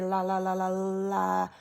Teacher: It is, in fact, it is a voiced alveolar lateral approximant. It's voiced because our vocal cords are making sound when we make it. It is alveolar because our tongue goes up to the alveolar ridge.